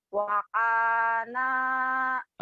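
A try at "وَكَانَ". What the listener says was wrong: bibirnya jangan ngeweng-weng. Wakan. jangan dibuka begitu ya. Bibirnya dikecilin. Dikecilin. Wakana jangan wakana jadi jelek.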